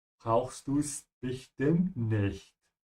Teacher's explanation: Here we have an E that's dropped, so this is du es nicht, brauchst du es nicht.